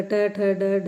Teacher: जिनके उच्चारण में हमारी जीव मूर्धा से टकराती है उनको हम बोलते हैं मूर्धन्य व्यंजन